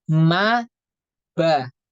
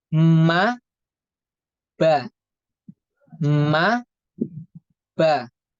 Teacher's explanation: huruf mim dan ba keluar dari kedua bibir yang dirapatkan ba dan mim atau mim dan Ba Itu keluar dari kedua